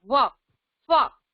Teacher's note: दंतोष्ठ्य में क्या होगा, हमारे ऊपर वाले दांत और नीचे वाला होंठ, व, फ। हो रहा है ना, दांत, अगले दांत लग रहे हैं हमारे नीचे वाले होंठ से, व, फ।